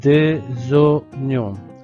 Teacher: le S devant le O, le S va se prononcer Z, des oignons